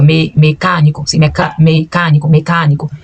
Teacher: Não fala mecânico, é mecânico, sim, mecânico, sim, porque o E é fechado, então fica mecânico, sim, mecânico. O E é fechado, o A é aberto, não nasaliza nem M nem N